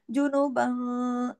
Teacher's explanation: थोड़ा सा इख्फा हो जाएगा, आधी आवाज नाक में चली जाएगी, आधी बाहर रहेगी।